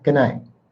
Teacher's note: You really can't hear the t, but I promise you it's there. · You can't hear the T because it's super soft, but I can promise you it's good night.